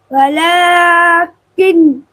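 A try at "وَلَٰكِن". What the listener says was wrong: नून क्यों नहीं लाना बीच में? काफ सीधा लाम से मिलेगा आखिर।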